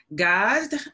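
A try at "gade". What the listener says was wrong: So by the way, remember we say that in Haitian Creole we pronounce all the letters. So that would be Gadi.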